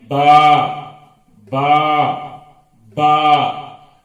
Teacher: با ہونٹوں سے نکلتا ہے. یہ دونوں ہونٹوں کو ملا کر کھولنے سے نکلتا ہے با. یہ با جو حرف ہے اس کو کھینچ کھینچ کر پڑھنا چاہیے.